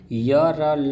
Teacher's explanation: य र ल जो है वो अल्प पराण में है और घोष है